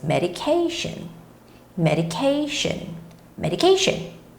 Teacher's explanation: And here, the word is quite long, but whenever you see a word that has the T-I-O-N ending, you don't necessarily have to, think about where the stress goes, because almost in every case, the stress of the word goes right before the word T-I-O-N